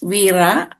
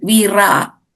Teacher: trill the R a little bit. It's a soft R.